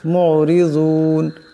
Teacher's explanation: এই জোয়াদকে মোটা আওয়াজে পড়তে হবে